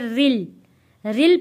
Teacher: کیونکہ را کے نیچے زیر ہے اس لیے ہم نے اس را کو موٹا نہیں پڑھنا